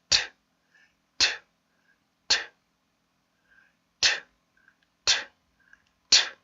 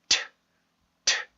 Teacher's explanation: 그래서 공기를 터트린다라는 의미에서, 그래서 치조에 혀를 붙여놓고서 공기를 모았다가 툭 하고 터트려 주시면 돼요. 이런 식으로 트, 트, 트, 트, 트, 트. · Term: T 발음